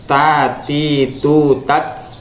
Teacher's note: Dan untuk masalah ta ya, ini lidah jangan sampai keluar ya. Dan di sini ada sifat hamas.